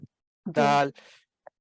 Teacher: دال حرف, اس میں زبان کی نوک اوپر آپ کے مسوڑوں کو جا کے لگتی ہے